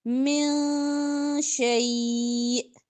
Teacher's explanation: پڑھیں گے، هل لنا من الامر من شیء، من نہیں پڑھنا، نون کی آواز کو یہاں پہ آپ نے ہائیڈ کرنا ہے، چھپانا ہے، اخفا کریں گے ، من شیء، حمزہ پہ وقف کریں گے، دو زیر نہیں